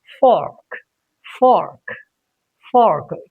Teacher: R is not at the end in this particular word. It is in the middle of the word. So we can say fork. A little retroflex kind of sound comes. Okay. It cannot be completely ignored, but a little sound somewhere around.